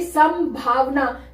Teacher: यहां पे पूरे म की साउंड आ रही है क्योंकि यहां पे भ है भ जो है वो प वर्ग में से आया है प वर्ग का पांचवा वर्ण म होता है इसलिए यहां पे